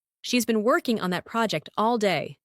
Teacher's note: The stress is on been, working, project, and day.